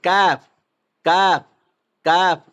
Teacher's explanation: ज़बान की जड़ और सख्त तालू से अदा होता है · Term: निंढड़ो काफ़